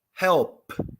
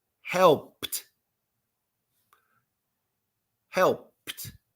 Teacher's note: and P has no voice